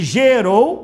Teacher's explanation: o rou é que é forte, são oxítonas